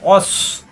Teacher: সিনের মতো যেন না হয়, মুখ গোল হবে, মোটা হবে